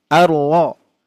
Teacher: Ro-nya dibaca tafkhim tebal. Arlo, tidak anro, hati-hati ya.